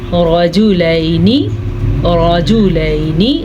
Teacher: را کو پر پڑھے اور لام زبر یا لئی یہ لین ہے نرمی کے ساتھ پڑھیں